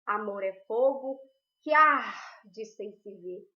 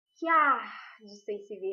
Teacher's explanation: Porque na pronúncia desse verso a gente não separa que arde.